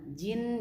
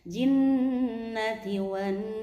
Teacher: Nah nunnya bertasydid dibaca gunnah. Jin jangan cepet-cepet di sini, minimal 2 harokat.